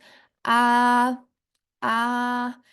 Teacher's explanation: al pronunciarla la lengua suele estar lejos del paladar, es decir, más bien reposando sobre los dientes inferiores y la mandíbula. · Pronúncienla conmigo frente a sus espejos. A, a, la lengua parece no estar tan próxima al paladar como sí ocurre con la I